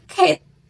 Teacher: Lalu ada pada cat, lidah rendah di depan dan mulut lebih terbuka